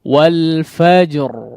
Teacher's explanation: Kalau kita lihat di sini ada huruf jim dan ra ya, huruf jim dan ra ya, yang kondisinya memang di waqaf atau di akhir ayat, kemudian dia bertanda sukun dua-duanya ya. Maka di antara sifat yang dimiliki oleh huruf jim di sini adalah sifat qalqalah ya.